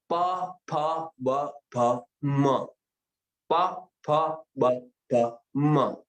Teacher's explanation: आप देखेंगे दोनों ओठ मिल रहे हैं और ये ध्वनि निकल रही।